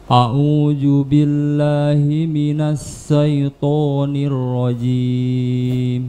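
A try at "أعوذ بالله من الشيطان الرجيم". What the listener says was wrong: Nasya Nasa bukan Nasa itu Sin Nasya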